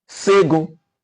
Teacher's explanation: somebody from Osun State will pronounce with the sibilants